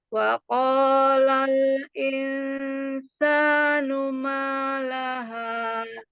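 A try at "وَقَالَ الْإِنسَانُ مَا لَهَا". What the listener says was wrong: Wa qalal insa sa. Nah, jangan angkat sa-nya. Wa qalal insanu ma laha.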